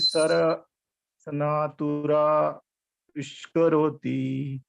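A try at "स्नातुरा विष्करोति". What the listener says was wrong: Sanatula nahi, snatula. That is why you join that. Snatura vishkaroti. Snatura.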